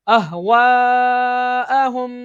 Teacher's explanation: हरूफ मद के बाद हमजा इसी कलमे में मद्दे मुत्तसिल, इसको भी दो अढ़ाई अलिफ के बराबर खींच के पढ़ते हैं।